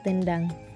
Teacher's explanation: Karena N dan D sama-sama di alveolar atau di dental juga